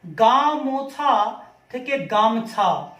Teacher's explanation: ওকারটা উঠে গেল, মাঝখানের যে স্বরধ্বনিটা ছিল ওকার, সেইটা লোপ পেল, লোপ পেয়ে হয়ে গেল গামছা। এখানে দেখো এই যে ম, এখানে দেখো ওকার নেই, এই ওকার উঠে গেছে, তাই এর নাম মধ্য স্বরলোপ।